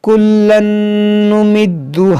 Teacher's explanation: تنوین کے بعد نون ہے تو یہاں پر ادغام کریں گے اور اس میں غنہ بھی کریں گے، دال کو خوب جماؤ کے ساتھ پڑھیں گے۔